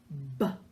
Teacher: the B sound is made by pressing your lips together, and it's a voiced sound. So it sounds like this, B.